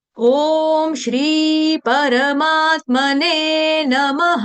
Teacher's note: ने थोड़ा सा दीर्घ कर देंगे क्योंकि बड़ी मात्रा मतलब कि दीर्घ मात्रा है वहां पे ने न के ऊपर एक मात्रा ने।